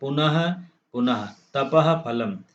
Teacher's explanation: विसर्ग का भेद उपथमा नियम जब विसर्ग के बाद प फ वर्ण रहते हैं तब अर्ध विसर्ग उच्चारण होता है। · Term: उपध्मानीयम